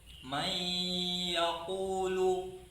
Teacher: Tapi kalau may yaqulu, sisa-sisa nun itu masih ada berupa gunnahnya itu, maka disebut dengan idgham nakis. Panjangnya 2 harokat.